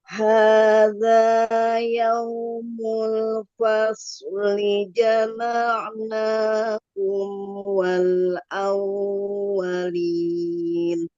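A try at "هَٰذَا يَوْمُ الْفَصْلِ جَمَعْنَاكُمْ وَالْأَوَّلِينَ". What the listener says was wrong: sedikit lagi awalin kurang panjang. Nah, kita seraga empat harakat. Kemudian ee shadnya tebal lagi sedikit.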